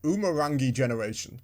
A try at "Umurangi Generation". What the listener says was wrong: It's a soft G. Umurangi.